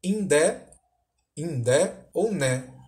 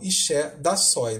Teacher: Quer dizer, o D tem sempre que acompanhar o N, uma marca de nasalização